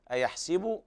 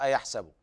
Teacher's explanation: أيحسب الإنسان، وهنا السين فيها الفتح والكسر وهما لغتان. قرأ حفص ومن وافقه من القراء بفتح السين، وقرأ ورش ومن وافقه من القراء بكسر السين.